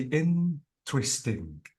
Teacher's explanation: notice that the stress is on in